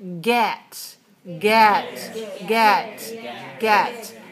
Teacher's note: in English you have to keep your mouth open and let a little bit of air out when you say get get get get